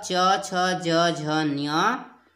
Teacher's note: च वर्ग जिसे तालव्य बोला जाता है उच्चारण स्थान तालू है